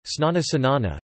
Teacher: The sequence sn may become sin initially